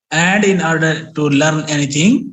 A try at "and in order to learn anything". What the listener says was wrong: learn نہیں کر رہے ہیں, learn کھینچو یار اس کو, میں کیا کہہ رہا ہوں. learn and in order to learn anything.